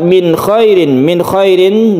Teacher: nun mati bertemu dengan kha- disebut dengan izhar halqi halqi artinya tenggorokan